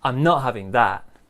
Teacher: not having that this disagreeing phrase quite strong disagreeing phrase so big stress on not